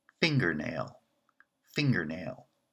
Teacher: finger and nail we ask is the second word branching and nail is not branching so it's the weak member of the compound and finger is the strong member